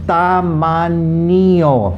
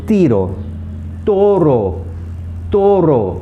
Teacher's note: Okay, then the te. The Spanish T again has a very soft sound like the Spanish D. It doesn't have a strong sound like the English T.